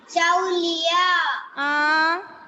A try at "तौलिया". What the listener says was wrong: चौ और तौ कौन सा अक्षर है? ए है चौ. तौ. तौलिया. तौ. तौ. Taulia. Taulia. It is wrong. Chow. That is another.